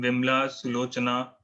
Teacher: after ma and cha, the inherent sound is omitted